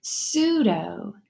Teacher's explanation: the P is silent now and you only hear the s